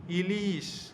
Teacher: এই জিনিসগুলো যখন তোমরা উচ্চারণ করবে তোমরা দেখো যে ঠোঁট তোমাদের ছড়িয়ে রয়েছে। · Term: প্রসারিত স্বরধ্বনি